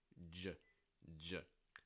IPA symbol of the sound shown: dʒ